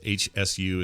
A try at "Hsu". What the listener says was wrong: I think I would say that the H is silent you just call him su